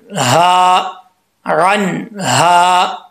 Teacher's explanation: के आगे अलिफ है एक अलिफ की मदार इसको लंबा करेंगे हा दो आंखों वाला यहां पर इसका तालुक सीने की तरफ है हल की तरफ नहीं है तो इसको भारी साउंड के साथ पढ़ेंगे